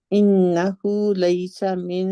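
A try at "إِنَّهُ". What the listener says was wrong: भी नहीं है मेरी बहन, अगर खींचते हैं तो हु लंबा हो जाएगा।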